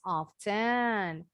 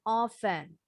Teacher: Boleh dengan bunyi teh yang jelas often atau t nya dibuang · Bacanya boleh dengan bunyi T yang jelas. Often. Atau T-nya dibuang. Often. Sama ya, orang Inggris sama orang Amerika dua-duanya pakai dua pengucapan ini.